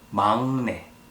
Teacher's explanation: Even though the first letter has 기역 on the bottom part, it should sound like 응. So it's 막내, not 막내.